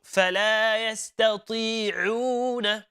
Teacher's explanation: Making sure the Ain is coming from the middle of the throat and not the bottom of the throat. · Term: letter Ain